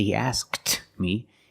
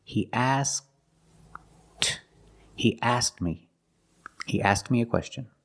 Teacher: This happens when the K is between consonants. You make the position of the K, but you don't release the sound.